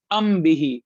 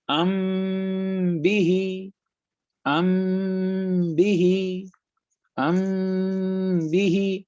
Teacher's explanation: دیکھیں یہاں میم کے بعد با آیا نا, تو ہم کیا کر رہے ہیں, اسے ناک میں چھپا رہے ہیں آواز کو 2 سیکنڈ کے لیے. ام بھی, اگر میں کہتا ام بھی تو اس کا مطلب ہے میں نے ناک میں نہیں چھپایا, میں نے میم کو واضح پڑھا ام اور پھر بھی, لیکن میں ناک میں چھپا رہا ہوں.